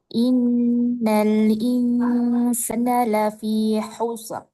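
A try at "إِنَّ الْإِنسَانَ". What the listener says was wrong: Sana, sa panjang. Innal insana.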